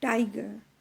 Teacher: Now we have stressed on the first syllable, that is tie. G, we don't put any stress on it.